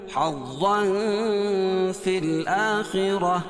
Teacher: گول تا کو وقف کی صورت میں ہائے ساکنہ سے بدل دیں گے اور را پور پڑھی جائے گی